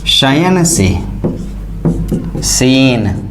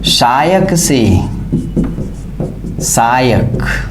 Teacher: पाली में इस तालव्य स और मूर्धन्य स, इन दोनों का प्रयोग नहीं हुआ, इनकी जगह दंत्य स आया।